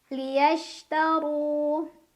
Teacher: Shin itu punya banyak sifat, tapi salah satu yang khas adalah sifat tafashi, yaitu menyebarkan angin di dalam mulut.